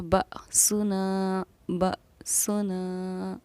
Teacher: یعنی یہ حمزہ ساکنہ ہے، اس کو پڑھنے میں ہمیشہ ہمارا جھٹکا ہوتا ہے، اسی لیے اس کو ہم پڑھیں گے بأسنا، بأسنا۔